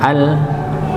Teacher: Di sini kita temukan ada nun sukun ketemu lam [berdehem] ya. Maka nun sukunnya sudah tidak terbaca langsung masuk ke lamnya. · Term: idgham bila bila ghunah